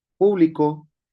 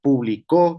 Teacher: público con acento en la U. es público. Eh, a diferencia de publicó con acento en la o